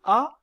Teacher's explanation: l'espace entre la langue et le palais dans le cas de la voyelle a qui est la voyelle la plus ouverte de la langue française la langue est abaissée au maximum